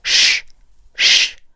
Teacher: 这一嘴巴是往前撅的，同时嗓音不震动